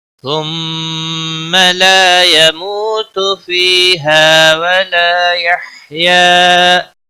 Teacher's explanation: ثم میم مشدد پر غنہ ہوگا.